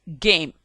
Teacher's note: G. Voice velar plosive. Game.